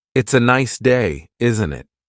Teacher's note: The tone going up at the end tells the listener that you're asking a question. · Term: intonation